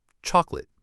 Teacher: But we stress the first part, chalk. The middle O disappears. It gets swallowed by the schwa.